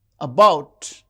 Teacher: the second syllable is stressed